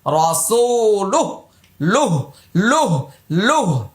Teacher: এই যে উল্টা পেশে এখন ওয়াকফ করছি, জজম দিতে হবে, সাকিন দিতে হবে, টান হবে না।